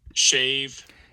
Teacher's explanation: a sibilant fricative at the start. Low cutoff frequency, that's an esh